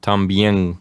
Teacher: making the N sound sort of in the back of your throat, like también.